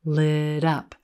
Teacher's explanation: notice how that flap T connects in front of the word up.